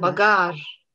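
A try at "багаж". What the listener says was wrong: Bagage, t'entends encore une fois, au lieu de je, on entend ch, bagage. Tu vois, c'est encore une fois l'assourdissement. Là, on écrit je, mais on prononce ch, bagage. Bagage.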